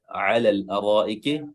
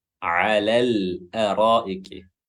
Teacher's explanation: huruf ain dilafazkan dengan jelas di pertengahan tenggorokan atau tenggorokan tengah